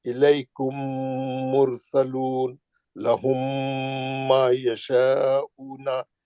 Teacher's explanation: मीम साकिन के बाद मीम आया तो मीम का गुन्ना करके पढ़ना है। · दो मीम जमा हो गए तो आप गुन्ना ही करेंगे। जैसा आप मुशद्दद मीम को अगर आप वो करे, ब्रैकेट खोले, तो एक मीम साकिन निकलता है, एक मीम मुतहर्रिक निकलता है।